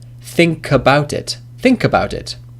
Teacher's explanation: The last sound is k, which is a consonant, and about, the first sound is a, which is, of course, a vowel. So the last consonant, as in think, links to the vowel.